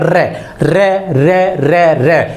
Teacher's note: क्योंकि इसके उच्चारण में जीभ जो है उसमें एक कंपन पैदा होता है र र र र र उसमें क्या होता है एक कंपन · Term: लुंठित व्यंजन, प्रकंपित व्यंजन